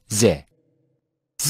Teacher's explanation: Z is pronounced by touching the back of upper central teeth with the edges of the tongue